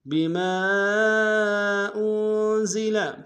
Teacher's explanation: آمنوا بما انزل، بما انزل، بما میں میم کے ساتھ الف مدہ، الف مدہ کے اوپر مد منفصل ہے، کم سے کم دو الف انداز میں کھینچیں گے. حمزہ کو نون کے سامنے لانا ہے، نون کے اوپر تشدید زور دیں گے.